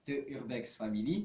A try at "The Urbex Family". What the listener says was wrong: The Urbex Family, pas te.